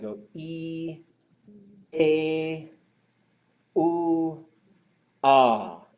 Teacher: if you go from the front you go e a ooh ah it just goes a little further back in the throat and the shape of your mouth changes